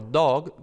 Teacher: la O de, por ejemplo, dog, pues es casi baja